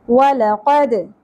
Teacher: دال ساکن پہ قلقلہ ہوگا